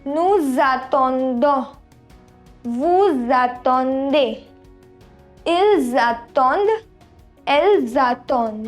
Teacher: And over here in nous, vous and il, elle form, when the verb has a vowel, when the verb starts with a vowel, we have liaison. Liaison means sound Z.